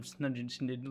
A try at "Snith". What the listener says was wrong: No, Snungin Snith. No, it's like Snid. Snith. Snith. TH.